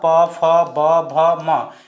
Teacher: प फ ब भ म इस सभी का उच्चारण कहां होता है ओट की मदद से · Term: ओष्ठ वर्ण